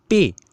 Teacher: پی کی آواز پر ہونٹ آواز کو روکتے ہیں، پے۔ آپ بھی کر کے دیکھیں، آپ کو خود اندازہ ہو جائے گا، ٹھیک ہے۔ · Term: مصمتے